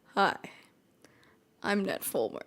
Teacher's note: The part about vocal fry is that in the episode, he had so much vocal fry, it sounded crazy.